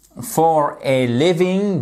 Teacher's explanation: il faut bien mettre donc cette accentuation sur la première syllabe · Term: accent tonique